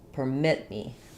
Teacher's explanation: So we have a short little purr and then mit has my long clear vowel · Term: second syllable stress